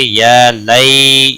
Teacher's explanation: یا لین ہے، تھوڑا نرمی کے ساتھ کھینچ کر ادا کریں گے.